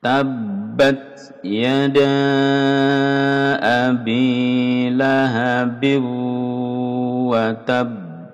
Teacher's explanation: Tabbat ba double tasdid, ditekan dan ditahan 2 harokat. Tabbat, terus ta ini hamas ada udara yang berdesis keluar.